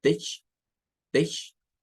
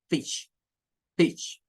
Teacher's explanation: Y pues no puede corregirle al niño la pronunciación, porque el niño hace esta palabra que está aquí como que fuera una E, porque realmente el sonido es, el sonido de esta I corta del inglés está entre una E y una I nuestra. O sea, está en medio de esos dos.